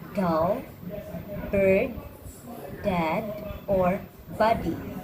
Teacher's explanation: made by stopping the air with the tip of your tongue at the alveolar ridge